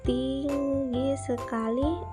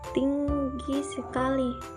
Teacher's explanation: Dalam hal yang pertama, i dari segmen ting diucapkan lebih lama, sedangkan dalam hal yang kedua, i dari segmen gi diucapkan lebih lama.